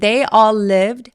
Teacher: all이 아니라 더 길게 all이라고 턱을 벌려 주시는게 포인트예요